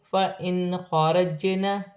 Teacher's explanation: نون ساکن میں غنہ نہیں ہوگا، آگے خا حروف حلقی میں سے ہے، جیم ساکن ہے، حروف قلقلہ میں سے ہے، قلقلہ کے ساتھ ادا کیا جائے گا